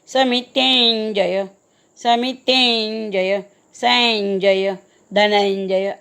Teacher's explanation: आता तीवर अनुस्वार आहे आणि अनुस्वारापुढे ज आलेला आहे. ज वर्गातलं शेवटचं अनुनासिक म्हणायचं. च छ ज जय समितेंजय, समितेंजय, संजय, धनंजय असं.